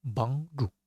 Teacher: it's a help first and fourth tone